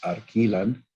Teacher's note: the lateral is replaced by a tap